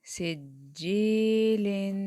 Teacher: یا سے پہلے زیر ہے، اور زیر جب آئے تو یہ وجائے مدہ ہوتا ہے، اور اس کو 1 سیکنڈ کے لیے ہم لمبا کرتے ہیں